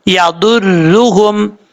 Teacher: ضاد حروف مستعلیہ میں سے پر پڑھیں گے، را کے اوپر پیش ہے، را پر پڑھا جائے گا